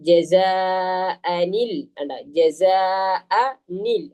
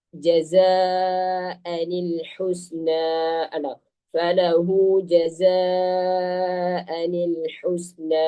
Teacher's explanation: നമ്മൾ അതിന് ശേഷമുള്ള ആ അലിഫിനെ നമ്മൾ സൈലന്റ് ആക്കുകയും ശേഷമുള്ള അക്ഷരത്തിലേക്ക് ആ നൂനിനെ കെസറുള്ള നൂനിനെ ശേഷമുള്ള അക്ഷരത്തിലേക്ക് ചേർത്ത് വായിക്കുകയും ചെയ്യും.